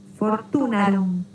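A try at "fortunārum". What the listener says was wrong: Fortunarum. Esa A es larga.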